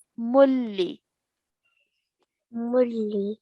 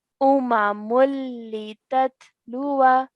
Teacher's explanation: Okay, so this is the rule that we've learned last week on idgham kamil to be more precise, where we have to emit the sound of the nasal sound and we straight away join the meme to the lam, and we only pronounce one of the dhamma